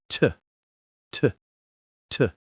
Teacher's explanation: A true clear t only happens when the letter t appears at the beginning of a word or at the beginning of a stressed syllable. When you pronounce it clearly, there's usually a small puff of air. · When you pronounce it clearly, there's usually a small puff of air. T, T, T. In fact, this kind of true sound isn't just for T.